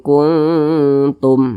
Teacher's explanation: ikhfa Hakiki ab'ad jadi cara membunyikannya itu karena dia ab'ad maka suara dengungnya dia lebih tinggi lebih dominanah maka lebih condong berbunyi Eng